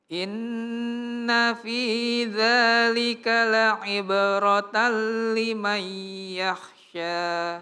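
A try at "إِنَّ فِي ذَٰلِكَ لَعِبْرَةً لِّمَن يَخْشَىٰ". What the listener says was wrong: Iya, kok harus selalu tebal ya. Yakh. Jangan yakh, tapi yakhsha. Jadi jangan yakhsha tapi yakhsha. Karena ya tipis, kho tebal, sya tipis lagi. Berarti balik dia. Inna fi dzalika la'ibratan liman yakhsha. Karena ada juga orang terpengaruh dengan tebalnya.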